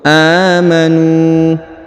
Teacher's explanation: a dipanjangkan dua harakat karena di atasnya terdapat Alif kecil kemudian huruf NU dipanjangkan dua harakat karena di depannya terdapat wau sukun · huruf a dipanjangkan dua harakat karena di atasnya terdapat Alif kecil